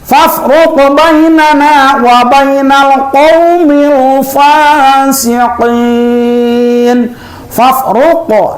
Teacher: kalau qaf dari aqsal lisan, qaf mati tadi hukumnya menjadi qalqalah.